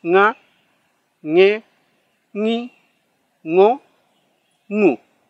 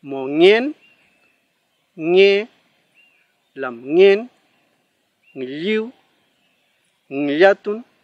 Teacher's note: Una forma más sencilla quizás de poder practicarlo es como gangoso, nga, ñe, ni, ngo, ngu, ¿ya? Tiene que sonar un poco gangoso el sonido de la ng.